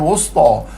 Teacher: Ta tebal. Wu muncung mulut.